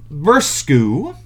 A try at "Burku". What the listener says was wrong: Burku, not Bursku, Burku.